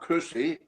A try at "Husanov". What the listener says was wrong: Husanov. It's not K-H, it's H as in Holland.